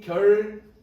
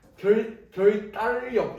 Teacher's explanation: 유음의 비음화라는 게 니은과 리을이 만났을 때 이 리을이 니은, 비음으로 바뀌는 경우가 예외적으로 있단 말이야